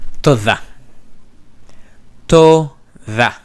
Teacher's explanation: Notice how you have the DH, this is fricative.